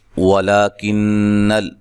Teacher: یہاں نون مشدد پہ غنہ ضروری ہے